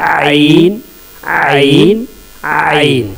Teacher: ये बीच हलक से निकलेगा, मिडिल थ्रोट से, बीच हलक से। आइन आइन आइन और हा का मखरज एक है, यानी ये दोनों एक जगह से ये दोनों लेटर निकलते हैं बीच हलक से, आइन और है।